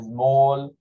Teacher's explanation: Ese que dice small, donde la A más parece como una O